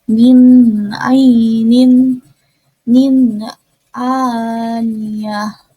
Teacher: nun sukun bertemu dengan huruf ain atau huruf halki, dibacanya itu izhar halki jelas